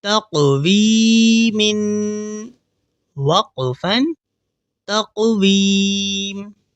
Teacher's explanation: یا مدہ کو ہم ایک الف کے برابر کھینچ کر پڑھیں گے